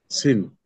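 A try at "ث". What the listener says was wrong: না, সিন না, এটা। এটা দেখেন, জিহ্বার আগা, উপরের দুই দাঁতের আগায় লাগাবেন, লাগিয়ে উচ্চারণ করতে হবে একালিপ্টে।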